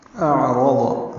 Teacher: حمزہ اقصا حلق سے، عین وسط حلق سے، را پر پڑھیں گے، ضاد بھی پر پڑھیں گے اور جلدی پڑھیں گے.